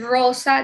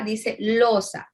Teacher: El chinoísmo es la sustitución de la letra R por la L. Cuando el niño en vez de decir real, dice leal.